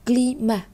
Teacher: Chúng ta không đọc là climat, mà chúng ta đọc là climat. Như vậy chữ T ở cuối cùng nó là một phụ âm đứng cuối và nó gần như là không được xướng lên trong trường hợp này